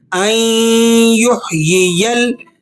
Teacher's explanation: یہاں نون کو آپ نے سائلنٹ کرنا ہے اور حمزہ کو ڈائریکٹ یا سے ملا کر پڑھنا ہے